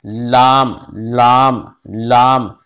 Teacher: कनारा जबान मसूड़े से मिलकर लाम अदा होता है